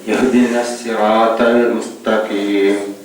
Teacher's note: ஹா உடைய மக்ரஜ். தொண்டையிட இறுதி பகுதியிலிருந்து ஸ்டார்ட் ஆரம்பத்தில் உள்ள மக்ரஜ்